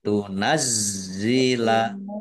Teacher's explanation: ada tasdidnya ditekan biar tampak doublenya